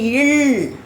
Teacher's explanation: மேல்வாயை நாக்கின் ஓரங்கள் தடித்து தடவுதல் வருதல்னா அப்படி லேசா தடவுதல்னா கொஞ்சம் அழுத்தமா பாருங்க ல் அப்படின்னு சொல்லும்போது மேல்வாயை